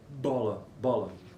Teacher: maneira oclusiva ou Explosiva então quando ela sai ela sai explodindo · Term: bilabial